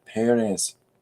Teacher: emphasis on the first syllable · the stress is on the first E, Perez.